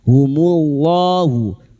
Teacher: lam jalalah yang didahului dumma dibaca tafkhim